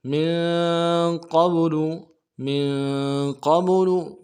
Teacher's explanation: मीम को नून साकिन के साथ मिलाना है, नून साकिन में गुन्ना करेंगे , क़ाफ को बा के साथ मिलाना है, क़ाफ को मोटा